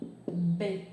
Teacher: B, ele é bilabial, porque os lábios se juntam